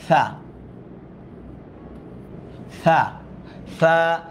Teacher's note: জিহ্বাটা আংশিক বের করে এটা বলতে হবে